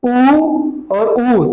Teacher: अब ओष्ठ का मतलब होता है ओठ से, जैसे हम उच्चारण करते हैं ऊ और छोटा ऊ और बड़ा ऊ का, हम बोले ऊ और ऊ, तो हमारे जो ओठ का आकृति हो क्या हो जा रहा है? गोला हो जा रहा है।